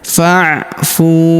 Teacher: Huruf fu kita panjangkan 2 harokat karena terdapat waw sukun di depannya.